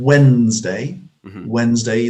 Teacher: the d generally has dropped out of that